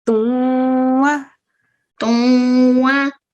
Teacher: In order to say the bit, the noon sound, you have to give it a couple of seconds. · the noon sakin in this sound, the un sound, which is the nasalization, it's partially hidden